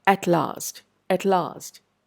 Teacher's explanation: the vibration of the vocal cords is distinctly reduced when you place your fingers over the throat to observe the